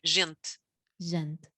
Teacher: Also at the end, that E you can barely hear it.